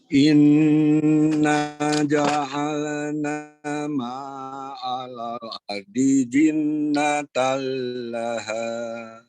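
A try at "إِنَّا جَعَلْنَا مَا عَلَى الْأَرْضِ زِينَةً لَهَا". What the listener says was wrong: Alal ardi, ya, ardinya dibaca pendek. Alal ardi zinatal, coba.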